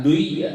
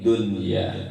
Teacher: Nun ketemu, nun mati ketemu ya itu idgham, tapi pembacaannya itu dibaca izhar.